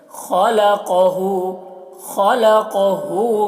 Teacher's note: ख़ को हलक से क़ाफ को मोटा करके